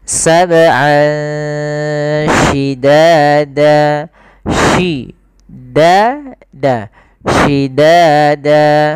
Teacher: Ini ada bacaan ikhfa. yaitu kita samarkan suara an ya ke huruf sin. Jadi terdengar seolah-olah dia ada eng gitu ya, tapi bukan ang, tapi dia ikhfa.